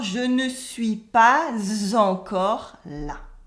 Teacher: you can do la liaison between pas and encore